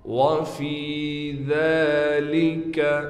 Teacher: فا کے بعد یا ہونے کی وجہ سے فا کو کھینچ رہے ہیں، ذال پر کڑا زبر ہونے کی وجہ سے ذال کو بھی 1 الف کی مقدار کھینچا جائے گا۔